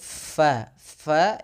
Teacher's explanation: sedikit nafasnya karena Fa memiliki sifat hams